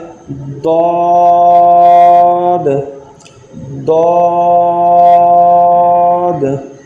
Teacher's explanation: یہ حروف حافیہ میں سے ہے جس کا مخرج زبان کی کروٹ اور اوپر کے دانتوں کی جڑ سے ادا ہوتا ہے